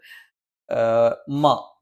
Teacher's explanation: രണ്ടു ചുണ്ണും തുല്യമായി അടച്ചുവെക്കണം